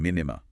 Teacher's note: the noon of min merges into the noon of nimma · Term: merging assimilation